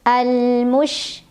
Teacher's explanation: huruf shin punya ciri khas ya, sifat yang tidak dimiliki huruf lain, yaitu sifat tafashi yang artinya menyebarkan angin tapi dalam mulut